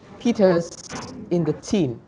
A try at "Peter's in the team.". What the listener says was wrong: Đúng rồi. Peter's in the team.